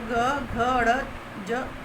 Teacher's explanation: इनका उच्चारण करते समय यदि गले पर हाथ रखा जाए तो कंपन का आभास किया जाता है। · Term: सघोष